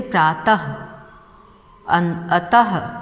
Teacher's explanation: इसके उच्चारण में स्वर के साथ हल्के ह का भी उच्चारण होता है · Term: विसर्ग